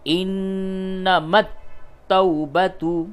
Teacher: تا کے اوپر تشدید ہے یعنی تا کے اندر سختی ہوگی اس کے ملانے میں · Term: مشدد